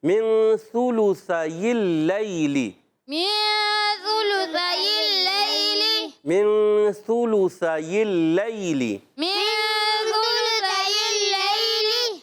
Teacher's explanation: سا کا مخرج زبان کا سرا اوپر کے دانتوں کے اندرونی کنارے یا بیرونی کناروں سے سا ادا ہوتا ہے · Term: حروف لثویہ